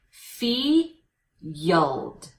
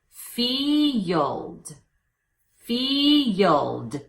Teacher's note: if you think of it as two syllables and if you use the Y shadow at the beginning of the second syllable